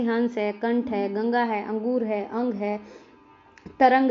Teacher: इसका उच्चारण स्वर के बाद होता है, और ध्वनि जो है वो नाक से उत्पन्न होती है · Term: अनुस्वार